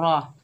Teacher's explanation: रा के ऊपर ज़बर है, बगैर खींचे पढ़ेंगे रा, रा मोटी पड़ी जाएगी